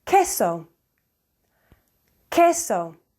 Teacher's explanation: the U after a q is always silent after a u after a g rather also so it's queso